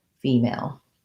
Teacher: And I have first syllable stress on female.